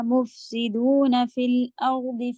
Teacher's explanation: مف فا میں ہوا کی آواز رکھیے گا, ٹائم بھی دیجیے گا.